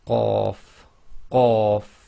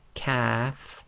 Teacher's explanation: when you say Qaf, the back of your tongue effectively touch the very back of the soft palate and blocks the air before you release the sound.